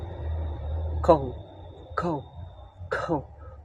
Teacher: This is a two-part of sound starting with ah, moving toward oh.